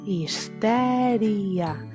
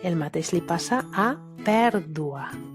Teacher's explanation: La I davant de la A no forma diftong, és un hiat. Per tant, la síl·laba tònica és l'antepenúltima.